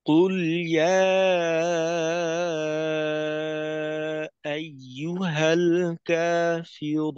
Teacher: এখানে কফ শুরুতে আসছে, তো ধাক্কাটাও ভিতরে আসার থেকে একটু জোরালো।